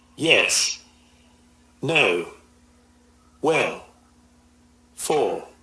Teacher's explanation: English speakers use a falling tone to say something in a definite and final manner